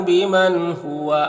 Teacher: یہاں پر نون ساکن کے بعد ہا ہے حروف حلقی میں سے تو نون میں اظہار حقیقی ہوگا. نون کو ظاہر کر کے جلد پڑھیں گے